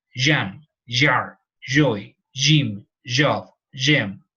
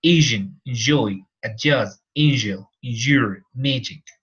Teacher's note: Very short. Remember, it is an affricate, so it stops.